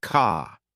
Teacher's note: British accent tends to soften the R, so car sounds more like car.